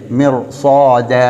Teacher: ஆனால் அதற்கு பின்னால் இஸ்திஅலாவுடைய தஃப்ஹீமான ஒரு எழுத்து அல்லது வல்லினமான ஒரு எழுத்து வந்திருக்கக்கூடிய நேரத்திலே மிர் சாத என்று நாங்கள் சூரத்து நபையிலே ஓதுவதைப் போல இப்போ இந்த ராவுக்கு சுக்குன் பெற்று அதுக்கு முன்னால் கஸ்ரா இருந்தாலும் நாங்கள் அதன் பின்னால் வல்லினமான ஒரு எழுத்து இருக்கிறதுனால மிர்சாத என்று ஓத வேண்டும். அப்போ இங்கே அதாவது ராவுக்கு முன்னால் கஸ்ரா இருக்கக்கூடிய நேரத்திலே இதை நாங்கள் வளமைக்கு மாற்றமாக என்ன செய்வோம், வல்லினமாக மொழிவோம்.